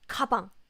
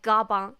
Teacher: So yes, Korean 기역 sound has more air. When we pronounce the 기역 sound, we speak out more air. Compared to English G sound.